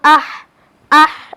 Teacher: একটু ভিতর থেকে উচ্চারণ করতে হবে কারণ এটা পাতলা হরফ আর যদি এটাকে আমরা জেড দিয়ে পড়তে যাই তাহলে আলিফের নিচে